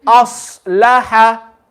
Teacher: when you're making the sad full, we don't want to make what's after it full as well. So we don't want to say as-salaha.